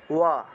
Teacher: আচ্ছা, তাহলে আমরা জানলাম যে সংস্কৃত ভাষায় দুই ধরনের ব আছে, একটা হলো অন্তস্থ ব আর একটা হলো বর্গীয় ব। অন্তস্থ বয়ের উচ্চারণ হলো ঠোঁট না লাগিয়ে ব উচ্চারণ, অর্থাৎ ওয়া